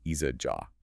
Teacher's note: a hamza, that glottal stop sound, comes immediately after a long vowel letter within the same word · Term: Mad